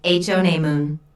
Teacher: There are 3 syllables in honeymoon, with the stress on the first syllable,